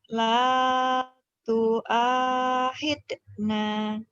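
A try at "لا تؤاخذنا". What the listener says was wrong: Jangan ada kol-kolahnya.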